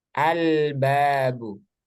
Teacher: Al bertemu dengan baah Bagaimana cara membacanya maka lamnya harus dibaca jelas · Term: al-qamariah